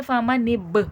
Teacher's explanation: یہ با ہے، حرف قلقلہ ہے، قلقلے کی صفات واضح ہوگی، آواز پلٹ کر سنائی دے گی کیونکہ دیکھیں یہاں با ساکن ہو رہا ہے.